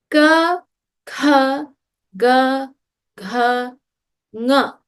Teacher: All of the sounds come from the back of the throat.